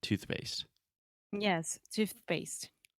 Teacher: my tongue is out of my mouth and then immediately we have to make the P sound and say pace so we say toothpaste sometimes it's not like